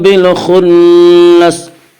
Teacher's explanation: نون مشدد غنہ ہوگا، غنہ کی مقدار 1 الف ہے